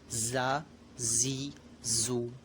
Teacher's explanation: زا یہ جو ہے یہ سیٹی والا حرف ہے، تو اس میں ہمیں اس کو جب ہم ادا کریں گے اس حرف کو تو سیٹی کی طرح آواز نکلے گی